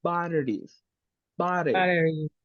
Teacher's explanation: for the American pronunciation, sometimes the letter T makes a sound like an R.